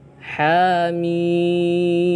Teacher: Ha dua harakat, mim enam harakat